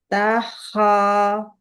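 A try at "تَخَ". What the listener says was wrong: Kho-nya buka lagi. Takho, kho. Suaranya naikkan ke langit-langit. Kho.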